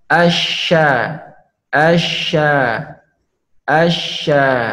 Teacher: menggesekkan punggung lidah ke langit-langit